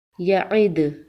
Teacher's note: وقف کی صورت میں دال پر قلقلہ ہوگا۔ دال حروف قلقلہ میں سے ہے۔